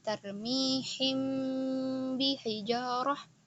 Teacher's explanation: Menjadi ikhfa asy-syafawi, yaitu ikhfa didengungkan, asy-syafawi yaitu yang keluarnya daripadanya bibir, maksudnya hurufnya keluar dari mulut ya. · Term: ikhfa syafawi